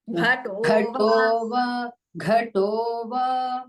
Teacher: The first time the Mahaprana was heard to the Tha also. It should be only to Gha.